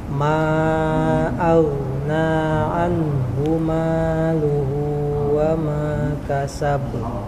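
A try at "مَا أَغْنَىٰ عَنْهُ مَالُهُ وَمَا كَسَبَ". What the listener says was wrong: Yang kol-kolannya lebih ringan lagi Pak. Kasab. Sama apa? Coba fathahnya ditambah sedikit lagi bukanya. Sama harus beda Pak ya antara tipis dan tebal. Beda kerangnya.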